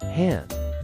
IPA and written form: hænd (hand)